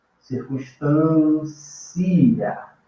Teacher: Eu subo, tá vendo? Eu saio da mais fraca e subo. Saio do I, que é mais fraco, e vou para o A, que é mais alto.